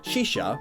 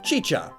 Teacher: they change the sh sounds into ch sounds which is pretty interesting